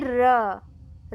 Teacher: र आप बोलेंगे तो वह दो तीन बार कंपित हो रहा है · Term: लुंठित व्यंजन